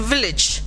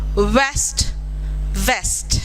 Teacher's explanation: v in village is a labiodental sound, w in west is a bilabial sound.